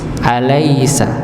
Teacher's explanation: yang yang mulia jalalah yaitu lafaz Allah ya kalau tadi kita alaisa lamnya dibaca tipis